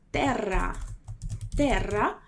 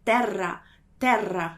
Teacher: Viu que tem 2 R's juntos ali? Quando isso acontece, aí vai ser vibrante mesmo, assim, com toda a força.